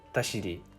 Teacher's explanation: the first syllable is higher pitched, but every syllable is still the same length